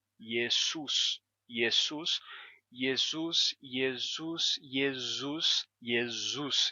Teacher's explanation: em latim agora como yesus ele vai mudar da seguinte maneira você vai ter esse som do S Entre vogais que vai se sonorizar o s vai terminar sendo pronunciado como Z